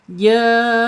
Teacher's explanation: Ketika ada mim sukun menghadapi selain ba dan mim, maka bacaannya secara hukum izhar syafawi. Mimnya dibaca jelas dan ditahan dua harakat